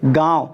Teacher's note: जब हम उच्चारण करेंगे इसका ध्वनियों का तो इसमें हमें और नाक व मुंह दोनों का प्रयोग करना होगा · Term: अनुनासिक